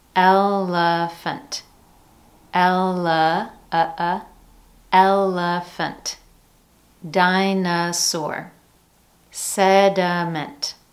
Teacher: Notice that each one contains a different vowel in the middle syllable, yet we're still using the schwa sound in each one of those.